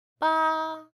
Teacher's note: To say the number 8, you would have to have a high tone for ba.